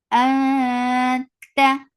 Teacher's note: this ikhfa is light. You're keeping your tongue straight and you're going towards the makhraj of ta. Ta. For fatha upon jaws, the sound is short.